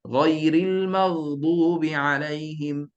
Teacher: Tapi kalau kita faham sifat huruf itu betul-betul, ghain ini adalah bunyi berterusan, no bunyi tertahan.